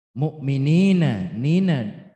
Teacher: ya sukun jatuh setelah harokat kasra. Panjang bacanya 2 harokat hukumnya matobi'i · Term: matobi'i dohiri